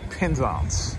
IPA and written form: pɛnˈzæns (Penzance)